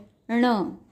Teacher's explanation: यह एक अनुनासिक व्यंजन है और इसका उच्चारण करते समय भी आपकी जीभ यानी कि टंग तालू को स्पर्श करती है. ण व्यंजन में अ का स्वर मिलाया जाए तो ण यह अक्षर बनता है.